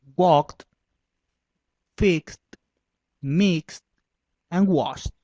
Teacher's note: En cuanto a los sonidos voiceless, el procedimiento es el mismo, solo que en vez del sonido de la D es el sonido de una T para terminaciones ed